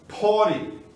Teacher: O T passa a ter som de R